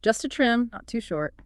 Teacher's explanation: really emphasize not too short so there's no room for misunderstanding